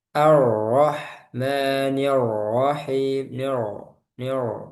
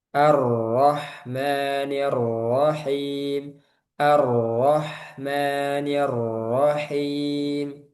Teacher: Ada ada takrirnya tapi enggak sampai berlebihan dan enggak sampai hilang.